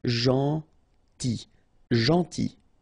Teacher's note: it's a strange one because here this final L is not pronounced